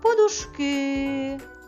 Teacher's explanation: Третій склад. Склад ки є наголошеним.